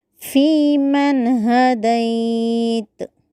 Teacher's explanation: فی من میں نون کو ظاہر کرتے ہوئے ہدیت یا لین کو مجہول کیے بغیر پڑھنا ہے